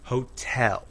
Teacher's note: in hotel the second syllable is stressed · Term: stressed syllables